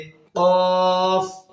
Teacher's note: জিহুবার গোড়া থেকে তার বরাবর উপরের তালুর সঙ্গে মিলিত হয়ে উচ্চারিত হবে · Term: কফ হরফটি